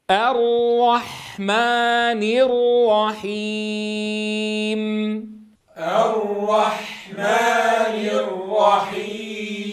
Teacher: الهمزة مرققة، الراء مفخمة، الحاء مرققة